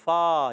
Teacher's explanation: فا پر زبر ہے. فا کا مخرج اوپر دانتوں کے کنارے جب نیچے والے ہونٹ کے تر حصے سے لگتے ہیں تو ادا ہوتا ہے